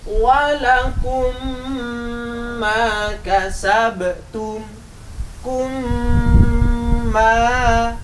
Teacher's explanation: Berarti mim sukun masuk pada huruf sesamanya, yaitu mim yang lain. Dan harus berdengung. Kalau berdengung berarti panjang, harus ditahan. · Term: idgham misli